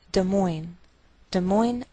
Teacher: Des Moines, Iowa. Note that we treat the name of this capital like one word, and the greater stress is on the second part, so we say Des Moines, Iowa.